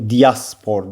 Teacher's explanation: Yəni tələffüs olaraq burda bir dənə i ilə arasına y daxil olur. Diaspor deyə tələffüs olunur.